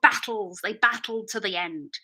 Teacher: I have airflow on the sides of my tongue